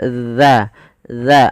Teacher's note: bagaimana cara membacanya yaitu ujung lidah kita agar sempurna daripada makhrajnya kita ee tempelkan ujung lidah kita dengan gigi seri atas